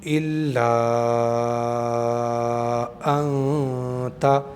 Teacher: نون پر اخفا کا قاعدہ ہے، اس لیے کہ نون ساکن آ گیا ہے اور اس کے فوراً بعد میں تا آ گیا ہے حروف اخفا میں سے۔